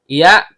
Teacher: tengah lidah naik memantul ke langit-langit